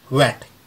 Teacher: अगला साउंड व, जो हम वेट के लिए इस्तेमाल करते हैं एस इन वेट। जब हम बोलेंगे तो हमारा होठ जो है राउंड शेप में आएंगे